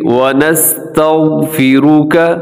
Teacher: غین کو ہلانا نہیں ہے، سین باریک ہے، تا باریک ہے، نون بھی باریک ہے، واو بھی باریک ہے۔